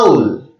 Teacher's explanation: आउल शब्द का प्रथम अक्षर आ का उच्चारण हम सीधे कंठ से कर रहे हैं, इसीलिए वह एक स्वर है, यानी कि वोवल साउंड है।